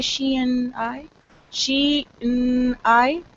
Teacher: what I've done actually is only pronounced N I have not pronounced A and D